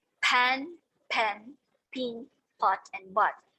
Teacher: they are produced with relaxed muscle. And take note, they are non-diphthongized. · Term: short vowels